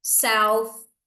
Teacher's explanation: Esse TH é aquele desvozeado. Ponta da língua entre os dentes e deixa soprar.